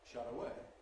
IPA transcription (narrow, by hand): ˈʃʌt̬ əˈeɪ